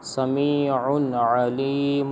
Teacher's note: یہاں پر غنہ نہیں ہوگا کیونکہ تنوین کے بعد حرف حلقیہ میں سے عین آ رہا ہے